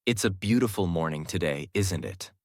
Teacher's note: The stress is on beautiful and morning. The voice rises on today and falls at the end.